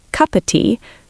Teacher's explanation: So if it's before a consonant, T, it disappears, cup of tea.